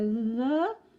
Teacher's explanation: the schwa, which is a little sort of grunt